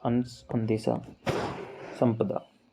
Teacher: अनुस्वार में आधा न बोलता है।